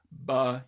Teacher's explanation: you simply close your two lips so that air can't flow out and but for a while there's no air flowing through your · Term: bilabial stop